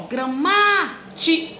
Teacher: A sílaba tônica é o ma.